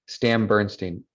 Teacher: that N at the end of Stan kind of becomes an M.